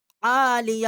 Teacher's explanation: عالیہ عین کے اوپر کھڑا زبر ہے، ایک الف جتنا آواز یہاں بلند کی ہے